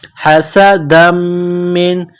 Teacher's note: बाद मानिकम कुफ ह सदम मिन हा गले से निकलती है सीन में सीटी की आवाज पैदा करेंगे सीन को बारीक करना है हस दम मिन दाल को मीम के साथ प्लस करना है · سین میں سیٹی کی آواز پیدا کریں گے، سین کو باریک کرنا ہے۔ حسدا من، دال کو میم کے ساتھ پلس کرنا ہے، میم مشدد ہے تو غنہ کریں گے، آواز ناک میں چھپائیں گے۔